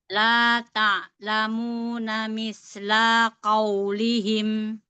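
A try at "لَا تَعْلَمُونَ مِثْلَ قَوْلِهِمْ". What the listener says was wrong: Ya, sudah bagus, tapi la-nya jangan panjang. La-nya satu aja.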